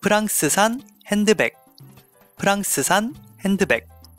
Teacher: remember to change the F sound to P and also the R sound to something in between R and L